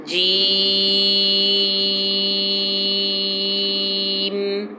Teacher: جیم کو جو ہے وہ 5 الف کے برابر کھینچ کے پڑھا جاتا ہے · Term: مد